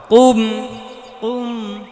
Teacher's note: কুম কুম হবে না, এটা কুম কুম কুম। জিব্বার গোড়া তার বরাবর পরে তালু থেকে তালুতে লাগাতে হবে। এটা ক ক ক ক এমন ধরনের আওয়াজটা করা যাবে না।